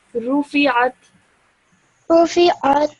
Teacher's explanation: Try to make that ayn sound from your throat a little bit more.